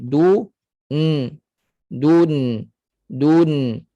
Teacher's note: dari sudut suaranya tawassud pertengahan maknanya Nun kena mengalir